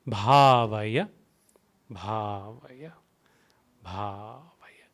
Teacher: stress on the consonant bha and A with a bar, so it is bha